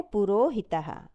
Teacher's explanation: हसी चा सूत्र के अनुसार विसर्ग का ऊ हो जाता है और वही ऊ अपने बाद वाले आ से मिलकर ओ का रूप धारण कर लेता है